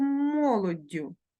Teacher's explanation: Подивіться подовжений приголосний д закінчення ю